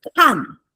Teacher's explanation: G is not, K is aspirated. Yes, K is aspirated.